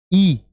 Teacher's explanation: तो गोल हो जाएंगे लेकिन अगर मैं ई बोलूं ई तो उ की तरह होठ आगे से गोल नहीं हो रहे तो ई को कहूंगा मैं अ वृत मुखी कि जिसके उच्चारण